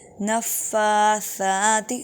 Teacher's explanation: نفاثات نون مشدد پر غنہ کیجیے